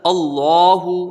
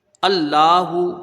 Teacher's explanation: لفظ اللہ سے پہلے یہاں زبر ہے تو اس لیے لفظ اللہ کا لام پر ہوگا، موٹا کر کے پڑھیں گے، ہا کے اوپر پیش ہے، اس کو جلدی پڑھیں گے، اور بیچ میں جو کھڑا زبر ہے اس کو ایک الف کی مقدار رکھیں گے۔